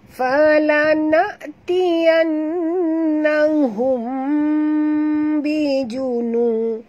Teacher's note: Falana'tiyannahum bijunu. Ya, mim mati bertemu ba, ikhfa syafawi dengung du harakat